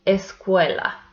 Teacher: It has three syllables and the second one is the stressed one. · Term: stressed syllable